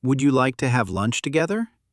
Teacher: It helps your voice sound friendly. Focus on polite rising intonation at the end of questions.